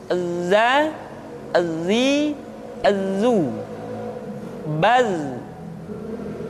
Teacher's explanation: ketika kita mengucapkan huruf dza suara kita mengalir akan tetapi nafas tidak boleh mengalir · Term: huruf Za, huruf za